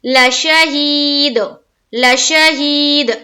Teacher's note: या मद्दा करते हुए खींचेंगे एक अलिफ के बाकदर, और दाल में हम वक्फ करेंगे, ठहर जाएंगे, तो हो जाएगा लशहीद।